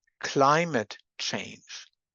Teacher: So the voicelessness of the k spreads forward and affects the l. So we have a progressive assimilation of voicing in this example. · the l in climate change is pronounced as a voiceless l